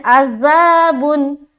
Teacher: बाज़ लोग कहते हैं अज़ाबुन, क्या पढ़ते हैं अज़ाबुन, तो क्या गलती हुई, पहली तो गलती ये हुई कि आइन अदा ही नहीं हुआ, अज़ा पढ़ रही है, लिहाजा आइन की जगह वो हमज़ा निकाल रही